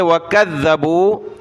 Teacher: ذال کو سخت کیا، زبان نکالیں گے